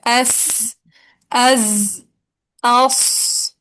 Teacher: तरफुल लिसान जब सनाया सुफला के अंदरूनी किनारों से लगेगी तो जा सीन स्वाद अदा होंगे। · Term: सफीर